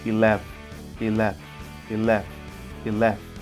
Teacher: Listen how the pronunciation starts almost erasing the first vowel sound. That is how shua is mostly done.